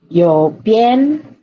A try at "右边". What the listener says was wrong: for tones, you're forgetting tones. How do you do fourth tone? Okay, no, do re mi. The fourth tone is like cutting a watermelon. It's going down. 右边，对啦。Stamp your foot.